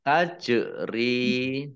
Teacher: jim sukun bacaan qalqalah atau memantul ya, ditampakkan pantulannya